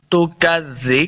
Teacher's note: کاف کو موٹا نہیں کریں گے، آگے دال کے ساتھ ملانا ہے، زا کو نرمی کے ساتھ پڑھیں گے۔